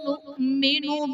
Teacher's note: نؤمن میں حمزہ ساکنہ ہے، جھٹکا دے کر پڑھیں گے